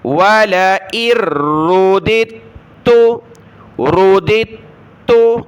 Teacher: دو دال نہیں پڑھنی، پہلی پڑھنی ہے دوسری چھوڑ دیں گے